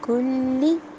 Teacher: لام پہ شد ہے، اس کی 2 دفعہ آواز آئے گی